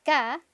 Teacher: Por ejemplo, si yo pronuncio una K solita, esa K, si me toco la garganta, me voy a dar cuenta que mis cuerdas vocales no vibran al pronunciar esa K